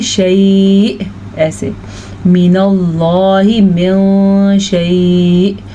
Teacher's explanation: شیء اتنا لمبا نہیں کرنا ہے کیونکہ مدہ کی کوئی کیفیت نہیں ہے، لین ہے، لیکن وقف کی وجہ سے تھوڑا لمبا ہو جاتا ہے · یہ نون ساکن ہے تو اخفا ہوگا یہاں پہ شین آنے کی وجہ سے